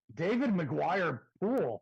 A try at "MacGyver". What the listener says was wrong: MacGyver. You said McGuire.